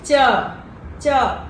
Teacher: आपका तंग है वह थोड़ा सा टीथ को भी टच करता है और आपके पलट को भी टच करता है